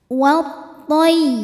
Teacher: Cara bacanya alif lam tidak dibaca atau dinamakan dengan idgham syamsi, masuk langsung ke ta. Wa tay, masuk ke ya tasydid dibaca dengan nabar, cukup kita naikkan intonasinya.